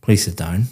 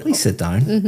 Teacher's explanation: my intonation is going up. It sounds completely different